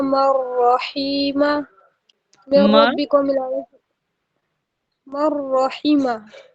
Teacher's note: مر رحیمہ کو ملانے کی صورت میں قاعدہ ہوا ادغام بلا غنہ